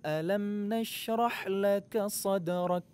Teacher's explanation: huruf Kaf itu masuk ke dalam kategori huruf yang mempunyai sifat Hamas mengalirkan udara atau berdesis